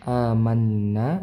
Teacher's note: Amanna di sini nun bertasydid maka di dengungkan, ditahan dua harakat.